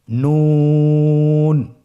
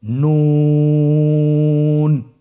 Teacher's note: আপনারা স্ক্রিনে দেখতে পাচ্ছেন জিহ্বার আগা তার বরাবর উপরে তালুর সঙ্গে লাগিয়ে উচ্চারিত হয়। আপনারা জিহ্বার আগাটা তার বরাবর উপরে তালুর সঙ্গে লাগিয়ে উচ্চারণ করুন